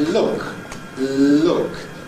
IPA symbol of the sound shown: lʊk